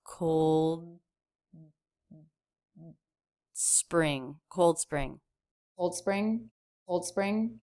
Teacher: the D sound also very subtle here certainly not released before the S